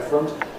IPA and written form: frʊnt (front)